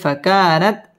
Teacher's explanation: ফাকা মধ্যে তাবাই এক আলিফ টেনে পড়তে হবে